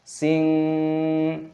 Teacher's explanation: kasroh tanwin bertemu dengan kaf, dibaca ikhfa, samarkan juga